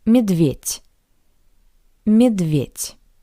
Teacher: Similarly to the previous word, the voiced consonant d sounds like the paired voiceless consonant t